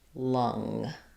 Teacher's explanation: And for lung, we have the ng, but the schwa vowel.